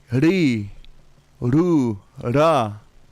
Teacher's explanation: we roll our tongues. Not the Hispanic way, but just a little bit lighter.